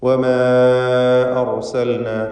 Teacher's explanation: ഇതിലുള്ള ദീർഘം മദ് മുൻഫസിൽ ജായിസ് എന്നതാണ്. അലിഫിനെ 4-5 ഹറക്കത്തിൻ്റെ അളവിൽ ദീർഘിപ്പിക്കുക.